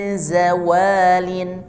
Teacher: Jadi lidahnya, ujung lidah ke bagian gusi bagian bawah atau pangkal gigi, ya, pangkal gigi bagian bawah, gusi bagian bawah. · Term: Zai